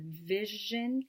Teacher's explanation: Next, we move on to the fricative voice sound, which is the sound zh, as in the middle sound of vision and the end of rouge